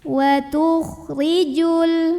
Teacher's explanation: Ra-nya dibunyikan secara tarqiq karena barisnya kasrah. Maka bacanya tipis, lidah datar.